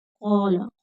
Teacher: قاف حرف مستعلیہ ہے، پور پڑھا جائے گا۔ کھینچ کر پڑھیں گے، آگے خالی الف ہے تو ماد ہوگی۔